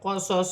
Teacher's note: صاد موٹے حروف میں سے ہے, سیٹی کے ساتھ ادا کیا جائے گا